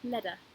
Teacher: T is often mispronounced as a D sound, particularly in American English.